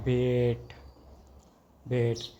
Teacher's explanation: a front mid unrounded tense vowel